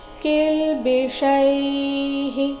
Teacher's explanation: ಕಿಲ್ಬಿಷೈಃ ವಿಸರ್ಗದ ಉಚ್ಚಾರಣೆ ಇಲ್ಲಿ ಹಿ ಆಗಿದೆ.